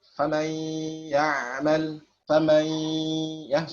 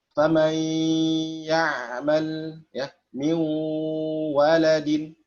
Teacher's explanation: Jadi kalau kamil kita bacanya famai ya, nggak ada lagi sifat nunnya ya. Sedangkan naqis adalah menyisakan sifat nunnya ya, atau masih ada nunnya. Famai ya'mal, famai ya, bergetar ya khayshum ya. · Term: idgham naqis bi gunnah